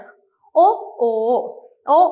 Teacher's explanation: ചുണ്ട് വട്ടത്തിൽ ആവുകയാണ് ചെയ്യുന്നത് വർത്തു ആകൃതിയിൽ വട്ടത്തിൽ ആവുകയാണ് എന്ത് ചെയ്യുന്നതെങ്കിലും ഓ ഓ ഓ എന്ന് പറയുന്ന